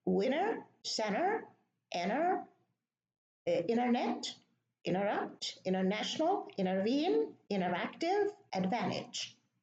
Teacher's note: Okay, so the T here is deleted, and in all the words there is an N before the T, and there is an E, there is a vowel after the T.